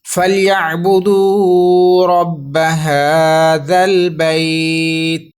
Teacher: رکنا ہم نے تا پر ہے، رکنے کی وجہ سے اس کی زیر کو ریموو کر کے عارضی جزم لگائیں گے۔ تو لین لیٹر کے بعد جب عارضی جزم ہوگی تو مد لین عارض بنے گی۔ آپ 1 2 یا 3 الف تک لمبا کریں گے۔